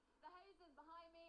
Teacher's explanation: Behind me, ona tady to d vynechává, nevyslovuje ho. To je taky běžně, když máte na konci slova v angličtině d nebo t, tak oni ho velmi běžně prostě nevysloví.